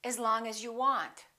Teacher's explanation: the vowel in the preposition generally becomes the neutral sound